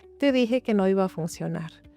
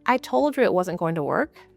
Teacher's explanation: In Spanish, we may say something like "Te dije que no iba a funcionar." "Te dije que no iba a funcionar." And notice that it comes out very smooth, very continuous, almost like one long unit. And now compare that to English, "I told you it wasn't going to work." "I told you it wasn't going to work." My voice automatically breaks this up.